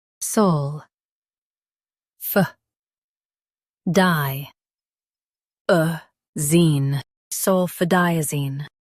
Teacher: Highlight di and keep zine soft.